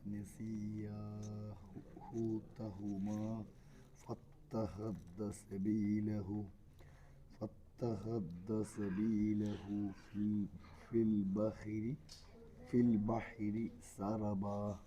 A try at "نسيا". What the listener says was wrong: എന്നില്ല, യായിന് ശബ്ദില്ലല്ലോ. അപ്പോൾ സിമ്പിളായിട്ട് നസിയ. നസിയായി യായിൽ ഒരു അലിഫ് നീട്ടണം.